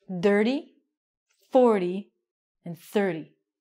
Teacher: With our numbers, again, we have a vowel and an r, so these ones are going to sound like a d.